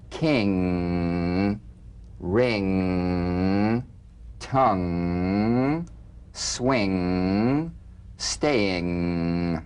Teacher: The NG is a voiced, tongue-backed, soft palate nasal consonant.